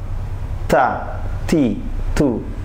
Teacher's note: keluar dari ujung lidah menyentuh pangkal dua gigi depan atas dekat dengan gusi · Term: huruf ta